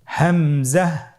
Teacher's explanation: হামজা হরফটি উচ্চারণের ক্ষেত্রেও বারিক করে উচ্চারণ করতে হবে এবং এখানে টেনে পড়া যাবে না দ্রুত পড়তে হবে